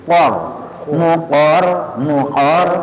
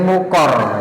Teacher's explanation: Jadi qofnya tebal, rnya tebal.